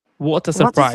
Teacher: T and A sound will be connected together.